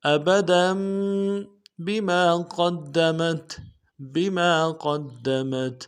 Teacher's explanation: ابدا میں دال کے اوپر جو تنوین ہے اس کو میم کے ساتھ بدلیں گے، غنہ کرتے ہوئے میم کے ساتھ بدلیں گے۔ ابدا بما قدمت بما میں میم کے بعد الف مدہ ہے، ایک الف دال میں کھینچیں گے، قاف کو موٹا کرتے ہوئے دال کے ساتھ ملائیں گے، دال کے اوپر تشدید زور دیں گے۔